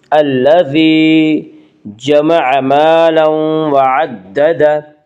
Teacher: الذی یا مدہ وہ یا جو ساکن ہو اس سے پہلے زیر ہو، یا مدہ کو 1 الف کے برابر کھینچ کر پڑھیں گی